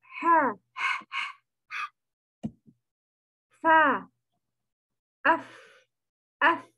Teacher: the reason of hams is the vocal cords are opening and non-vibration. So a lot of air is running.